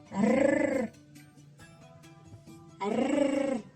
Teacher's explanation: Він утримується за верхніми зубками і дрожить.